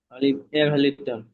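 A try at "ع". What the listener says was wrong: জি না, আইন হবে 3 আলিফ টান, জি, তিন আলিফ টান।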